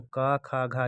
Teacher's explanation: का खा घा जो पहला वर्ग होता है वो कंठ होता है, उसका उच्चारण स्थान